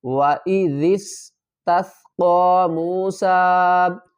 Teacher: ذال کو نرمی سے ادا کریں گے، ذال کو سین سے ملائیں گے، سیٹی کی آواز آئے گی۔